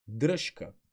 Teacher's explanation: тоест при дръжка се пише ж но се чува ш защото звучният звук ж се обеззвучава от беззвучния к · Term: обезвучава